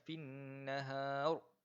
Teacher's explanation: ada huruf nun yang sabdu, jadi kena dengung dua harakat